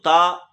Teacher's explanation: त जो है यह अल्प प्राण ध्वनि है